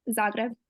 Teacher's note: It's pretty similar to how we say it, just rolled R.